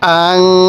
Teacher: আমরা কিন্তু এই নুন সাকিনের মধ্যে স্পষ্ট করে পড়ছি এখানে গুন্নাহ করি নাই কারণ নুন সাকিনের পরে এই হাটি ছিল ইজহারের হরফ এজন্য আমরা